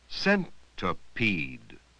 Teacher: That doesn't sound right. Notice we say the first and last vowels louder. We give them more stress than the middle one.